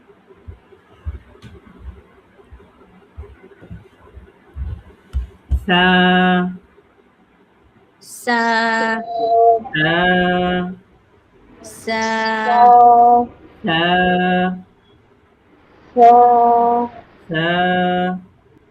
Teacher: এই সাটা হচ্ছে জিহ্বার আগা সামনের উপরের দুই দাঁতের আগের সঙ্গে লাগবে।